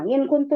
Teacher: نون ساکن کے بعد اخفا کا حرف آ رہا ہے. اخفا کا غنہ آ رہا ہے.